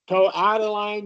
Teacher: the first time you read it, you flapped the T, toe out of line, which I thought was good.